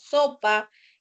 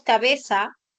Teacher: nosotros todo lo pronunciamos con el sonido de la fricativa alveolar sorda. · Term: ceseo